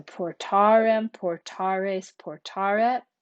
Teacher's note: I said we lengthen that final e but then it gets shortened again before final m t and nt in the active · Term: lengthen the final e